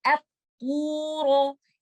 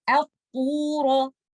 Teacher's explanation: حمزۃ الوصل کو میں نے ہیوی نہیں پڑھ دینا، میں نے اس کو اپ نہیں کرنا. اطورو.